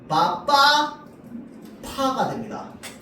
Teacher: 자, 다음 거센 소리는요, 성대 근육도 긴장되고요, 숨도 거세게 나오는 소리를 거센 소리라고 합니다.